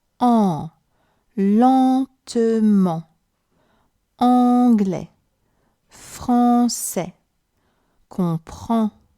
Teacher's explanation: The two letters EN and also AN sound like en when they're together, like in lentement, anglais, français, or comprend. To create that en sound, again, the air goes through your nose mainly, but this time, with your mouth, you do the shape of the English article a. So now, you just need to deal with the air through your nose, and you have an en. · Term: nasal sounds